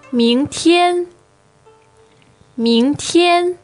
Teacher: Now, the tones there are second and first,